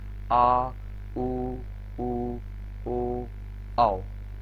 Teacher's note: इनको बोलते समय जो आवाज है वो आपकी गले के पीछे से आती है, मतलब गले के मतलब कंठ से आती है, तो इनको क्या बोला गया है, पक्ष बोला गया है। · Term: पश्च